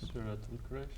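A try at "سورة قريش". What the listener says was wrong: Not Al-Quraysh. Not Al-Quraysh. Quraysh, only Quraysh. Surah Quraysh.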